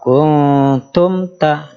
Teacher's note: mimnya itu tidak perlu ditahan karena bertemu ta dibaca izhar